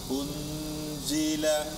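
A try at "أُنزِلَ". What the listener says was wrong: Cara bacanya, jangan sentuhkan ujung lidah ke gusi. Jangan un, tapi ke gigi seri bagian bawah. Un.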